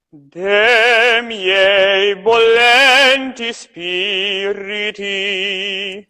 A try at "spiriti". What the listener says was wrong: Don't you put a really strong R. It's like spiriti, spiriti, spiriti. You don't have to stress the R. In Italian, at least.